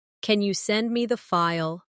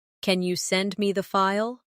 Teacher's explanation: Instead of saying flatly, "Can you send me the file?" use a rising tone at the end. "Can you send me the file?" It sounds more polite and more native-like.